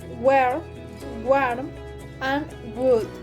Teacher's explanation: the place of articulation is velar.